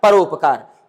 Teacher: जैसे पर उपकार, यहाँ पर अ है, यहाँ सामने उ है, आ और उ मिल करके ओ हो गया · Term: गुण स्वर संधि